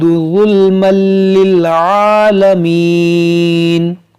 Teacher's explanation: یہ ظلمل یہاں پر ادغام ہوگا، تنوین کے بعد لام ہے